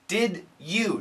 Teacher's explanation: When we have a D and a Y next to each other, we can get a J sound.